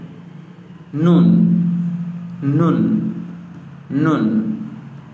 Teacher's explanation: জিহ্বার আগা তার বরাবর উপরে তালের সঙ্গে লাগাইয়া উচ্চারিত হইবে।